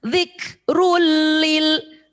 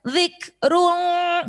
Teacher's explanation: Run ketemu lam, jangan dengung, satu ketukan. Idgham bila gunnah. Dzikrulil, jangan dzikrul, jangan masukkan ke hidung.